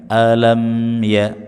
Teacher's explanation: Khazanatuha alam mimnya, mim sukunnya dibaca dengan idhar syafawi, jelas di bibir, dan berikan gunnah meskipun tidak sempurna